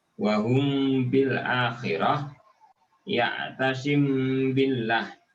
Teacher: harus disertai gunnah selama 2 harokat dengan kadar dan bobot sentuhan di janur hidung atau al-haisum yang ringan. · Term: ikhfa safawi